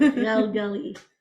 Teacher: Okay. And it's that gh that's in the back of your throat.